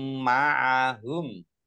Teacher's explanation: mim tasdid dibaca ghunah atau mendengung ditahan dua harakat